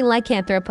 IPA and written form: ˈlaɪkənˌθroʊp (lycanthrope)